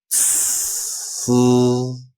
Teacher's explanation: there's like an explosion of air like almost like a tire being popped and then the voice comes in afterwards